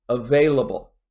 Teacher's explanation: in available i also stress the second syllable